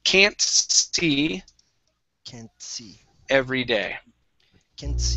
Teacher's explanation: When you pronounce can't, make sure to pronounce that T.